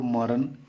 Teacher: ये मूर्धन्य न नहीं पड़ता है, उसके स्थान पे दंत न पड़ता है हमेशा